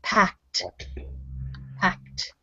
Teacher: it sounds like a t on the end and not an e d it's one syllable word